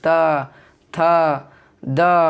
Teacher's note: दंत से बोला जाता है। त वर्ग का कहाँ से उच्चारण होता है? तो दांत से होता है।